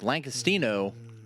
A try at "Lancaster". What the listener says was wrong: Lancaster. There's no G. Where do you hear a G? Lancaster. Lancaster.